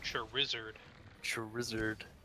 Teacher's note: so much emphasis is put on the Zard syllable